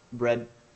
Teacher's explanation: Sometimes it's very subtle. Bread. You see, almost no D.